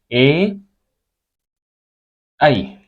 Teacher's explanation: प्राण वायु है कंठ के साथ और कंठ के साथ-साथ तालू से भी टकराते हुए मुख से बाहर निकलती है जिसके कारण इसको कंठ तालू वर्ण कहा जाता है और यह